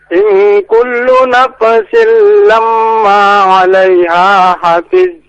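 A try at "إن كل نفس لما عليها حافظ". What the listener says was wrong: Huruf fa bukan huruf qalqalah. Jangan kita qalqalahan, jangan nafsil nafa. Nah, itu qalqalah ya.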